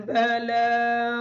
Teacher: لام کے اوپر کھڑی زبر ہونے کی وجہ سے اس کو تھوڑا سا لمبا کر کے پڑھیں گے